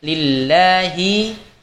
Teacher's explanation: Kalimat Allah dalam lafaz ini adalah sifatnya istifal. Tidak boleh kita baca tebal, tetapi di sini dibaca tipis